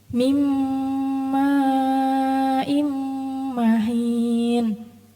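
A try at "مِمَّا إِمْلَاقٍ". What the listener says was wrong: Hinnya dipanjangin dikit. 4 harokat.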